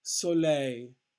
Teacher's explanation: soleil again the stress on the last syllable